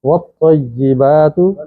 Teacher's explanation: طا ادا کرتے ہوئے زبان ذرا تالو سے چپک جاتی ہے